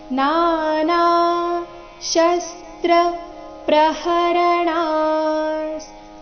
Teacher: ಣ ಆದ ನಂತರ ಇರೋ ವಿಸರ್ಗದ ಉಚ್ಚಾರಣೆ ಅರ್ಧ ಸ ರೀತಿ ಬರಬೇಕು